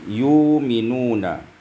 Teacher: yu'minuna ibdalu hamzati wawan maddiyah, iaitu menukarkan hamzah dengan waw mad. Macam mad asli yu'minuna.